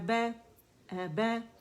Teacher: دونوں ہونٹوں کے گیلے سے پریس کر کے ملائیں گے تو با ادا ہوگا